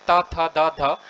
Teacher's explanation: साथियों त वर्ग का, अगर जैसे हम बात करते हैं त थ द ध, अगर त वर्ग के वर्णों की अगर आवृत्ति करते हैं यानी बोलते हैं हम, तो हमारी जो जीभ है वो दांतों से टच होती है, तो इसीलिए इसे क्या कहते हैं, दंत।